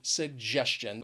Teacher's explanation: it has three syllables and the stress is on that second syllable